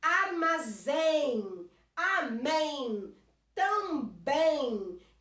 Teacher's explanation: Termina em, a mais forte é a última sílaba